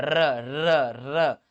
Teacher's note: र मिलेगा, लुढ़कता हुआ, र र र। तो र क्या कर रहा है? प्रकंपित कर रहा है, लुढ़क रहा है, लुढ़कता हुआ जा रहा है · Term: प्रकंपित व्यंजन